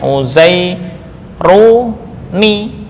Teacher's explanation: karena nun sukun ini bertemu dengan hamzah wasal dan kaidah mengatakan bahwa hamzah wasal jika di tengah hukumnya tidak terbaca, maka ini diberi harakat penolong berupa kasrah menjadi uzai ru ni.